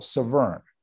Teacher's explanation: I will point out also a small thing, that Severn's name is pronounced with the emphasis on the second syllable, Severn. The river in the United Kingdom is the Severn, okay?